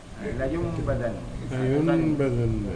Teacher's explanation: Apa ni nun tu tukar jadi mim